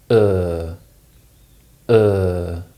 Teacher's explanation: this sound is pronounced more like a long vowel sound in modern pronunciation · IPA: /ʊə/